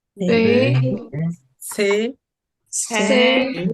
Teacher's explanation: 대 처럼 발음 하지 말고 , 약간 아래로 눌러서 좁은 이 발음 을 의식 적 으로 내세요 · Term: 좁은 e 발음